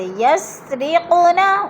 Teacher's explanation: قوف حروف قلقلہ میں سے ہے اور ساکن ہے، ادھر قلقلہ کریں گے، ہلا کر پڑھیں گے